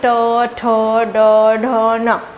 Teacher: ट वर्ग में जितने भी वर्ण आते हैं, ट, ठ, ड, ढ, न, तो ये जितने भी वर्ण आते हैं ये सभी मूर्धा से बोले जाते हैं। बोल के देखो, ट, ठ, ये यहाँ छुएगी तो ये मूर्धा हो गया।